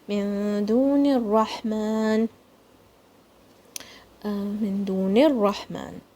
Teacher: Ra is going to be heavy and Ha is going to come from the middle of your throat.